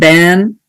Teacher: and then in ban, the a is nasalized